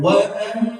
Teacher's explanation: Pertama gunnah karena mim musyaddadah. Mim musyaddadah artinya mim bertasydid ditahan.